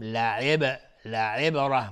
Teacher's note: لعب لعبر با قلقله میخواد و را هم حکمش استعلاست و با سکون ها میگیم لعبره.